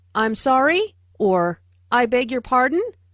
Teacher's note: In a more formal situation, try saying <I’m sorry?> or <I beg your pardon?> (with a rising intonation).